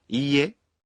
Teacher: When you say い い え, you pronounce I one beat longer.